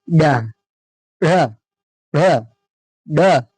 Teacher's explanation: आपकी जो जीवा है, उसका उच्चारण जब आप करेंगे तो झटके के साथ शीघ्रता से नीचे आती है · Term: उत्क्षिप्त व्यंजन